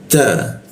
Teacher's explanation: Bayi, ada penekanan. Ta, nah huruf ta, ujung lidah bertemu gigi dia